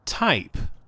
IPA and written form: taɪp (type)